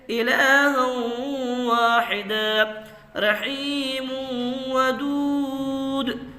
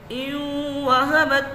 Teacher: ادغام مع الغنہ، یعنی گنہ کے ساتھ ادغام ہونا چاہیے